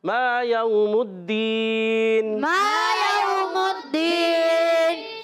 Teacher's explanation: मा अलिफ मद्दा, एक अलिफ खींचना है।